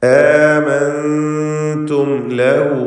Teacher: ഇൽഹാർ ഷഫവിയാണ് മീമിനെ ചെയ്യേണ്ടത്, മണിക്കാതെ വെളിവാക്കുക.